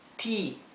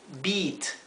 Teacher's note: se pronuncia como una I larga